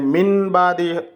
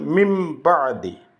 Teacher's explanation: নুন আর বা মিলিয়ে মিমের মতো করে উচ্চারণ করতে হবে, এটাকেই বদল করা বলে। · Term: ইখলাব